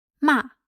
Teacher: The fourth tone falls from high to low pitch. It's the same as the English negation word no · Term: falling tone